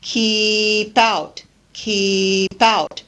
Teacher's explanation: a consonant and the next word begins with a vowel sound the consonant gets shared by both syllables so we really use the consonant at the end of the first word to link with the next word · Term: linking